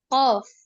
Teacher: জিহ্বার গোড়া উপরের তালুর সাথে লাগিয়ে উচ্চারিত হয় কফ